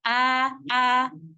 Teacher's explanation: Jangan sampai membacanya ana'a. Tahan dulu di makhraj nun, baru ketika mau mengucapkan ain, a, baru lepas makhraj nun. Supaya tidak sampai ada pantulan pada huruf nun. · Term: izhar